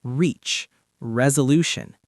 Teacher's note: In words like resolution or reach my goals, your tongue shouldn't touch the roof of your mouth. It should curl back slightly. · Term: The R sound